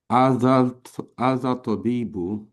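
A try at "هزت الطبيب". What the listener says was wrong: Okay, so we will have to say hazat tabibu. Hazat tabibu. Hazat tabibu. Yeah, you got to join it because we're not pronouncing the al. What is the rule of Shamsi letters and Qamari letters? We do not pronounce the al. Washamsu wa duha. Washams. We don't pronounce the al there. Similarly, hazat tabibu.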